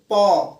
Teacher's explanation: जैसे प कहाँ से होता है ओठ से होता है